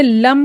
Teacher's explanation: मीम जो है यह साकिन हालत में मीम के मखरज में इसकी आवाज रुक जाएगी